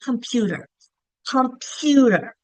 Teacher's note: So in computer that second syllable is stressed. The other syllables are shorter and quicker.